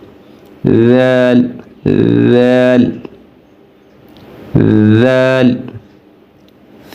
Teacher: کہ اب زبان ہم نے بالکل باہر نکال دینی ہے، زبان کی نوک باہر نکال دینی ہے اور نوک جو ہے وہ اوپر والے دونوں دانتوں کے نیچے لگانی ہے